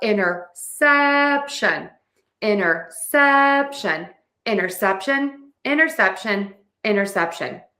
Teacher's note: The bigger point here that you need to remember is syllable stress. You need to stress the sep towards the end of that word. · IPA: /ˌɪn.tɚˈsɛp.ʃən/